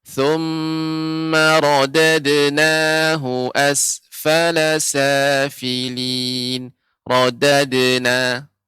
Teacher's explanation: Jadi qalqalah ini dia tidak lambat, jadi cepat.